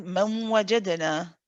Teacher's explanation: Because the incomplete gunna, because we said that this one with the waw and the ya is incomplete, you have to keep some of the original noon sound. And we said that's why the sound goes through your nose. And so this one is always with a gunna. · When we say wa, we've got some of the gunna from this original noon, from the first noon.